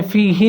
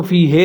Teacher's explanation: ہا کے نیچے زیر ہے تو آپ نے فی ہی پڑھنا ہے، اس کو فی ہے نہیں پڑھنا